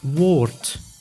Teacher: But at the end of the word, the D is pronounced as T, like in woord, which means word.